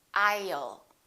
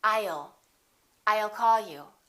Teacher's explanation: put little uh between the i and the l